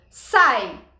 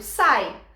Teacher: a vogal muito mais forte que o i semivogal